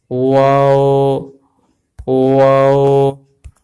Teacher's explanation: نون واو، آپ نے دیکھا کہ ہونٹ جو ہے تصویر کے اندر گول ہو گئے ہیں، ہونٹوں کو گول ادا کریں گے تو واو ادا ہوگا